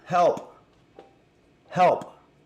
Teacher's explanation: it's because the word help includes the P, which is a plosive